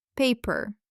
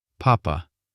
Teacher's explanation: The Russian sound P is very economical. The lips press tightly together and then just open gently. No extra air.